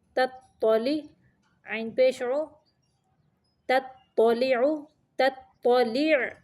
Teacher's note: یہ دیکھیں تا زبر تو تت، تا کو باریک پڑھیں گے اور تو کو موٹا پڑھیں گے